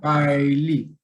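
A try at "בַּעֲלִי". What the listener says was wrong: ba, a, li. Acá recuerda no poner esa I porque dijiste como ay. Va ay. va a li. Va a li.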